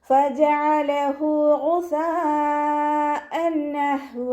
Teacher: ഫജഅലഹു ഫ ലൈറ്റ് ആക്കിയിട്ട് ഉച്ചരിക്കാൻ ശ്രദ്ധിക്കുക. ഐനിൻ്റെ മഖ്റജ് വസത്തുൽ ഹൽക്കാണ്, സൗണ്ടിനെ ഹംസയായി പോവാതെ ശ്രദ്ധിക്കുക. ഹ വമീറിന് ശേഷം വാവു സ്വൈറ വന്നു, 2 കൗണ്ട് നീട്ടിക്കൊടുക്കുക.